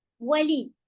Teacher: واو ہوٹ بول سے اور لی بالکل باریک